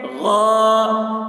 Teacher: غاسقن، غین الف زبر غا، الف سے پہلے زبر ہے، الف مدہ ہوا، اس لیے الف مدہ کو ایک الف کے برابر کھینچ کر پڑھیں گے